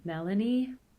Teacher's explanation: So there's a high edge tone at the end of the name. Once again, the first name has stress on the first syllable, but the high comes at the end. Melanie. The low in this case comes from a pitch accent, and in the first name that starts on the stressed syllable, the first syllable.